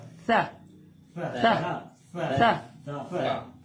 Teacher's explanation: جو سا ہے وہ زبان کا سرا اور اوپر کے دانتوں کے اندرونی کنارے سے ادا ہوگی